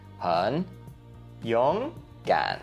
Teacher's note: 3 third tones is 3, 3, 3. But then all together, it becomes 3, 2, 3.